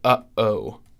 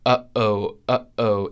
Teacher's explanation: stop the airflow with your glottis, basically closing your throat to stop the airflow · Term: glottal stop